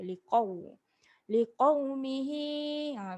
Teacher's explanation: Ni qaf ni huruf tebal. Liqau, muncungkan mulut kita.